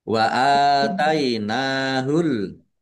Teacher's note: alif fathah berdiri, mat tobi'i, nun fathah berdiri, mat tobi'i, masing-masing dibaca panjang 2 harokat